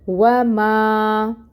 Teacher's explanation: یہاں پہ الف مد کا رول ہو رہا ہے، کیونکہ الف ساکن سے پہلے میم کے اوپر فتحہ کی حرکت ہے۔ 2 حرکت کے برابر ما کو لمبا کریں گے، 2 کاؤنٹس۔